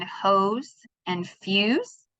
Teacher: the grapheme S often sounds like Z after a voice sound